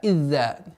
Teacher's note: Одна из самых распространенных ошибок это когда за произносится с давлением и появляется удвоение